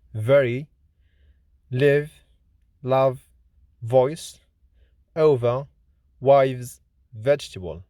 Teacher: V is voiced, lenis, labiodental, fricative consonant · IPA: /v/